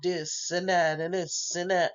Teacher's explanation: they have that fronting so the th is pronounced as a d